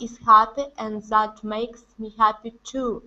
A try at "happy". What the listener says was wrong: Make sure to pronounce that E sound at the end. Instead of happy, it's happy, happy.